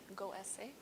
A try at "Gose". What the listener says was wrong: Gose. Don't read E. Gose.